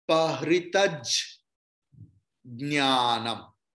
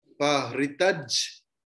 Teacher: ja will be pronounced twice